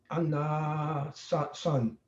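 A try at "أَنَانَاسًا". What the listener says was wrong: So there's two nas here.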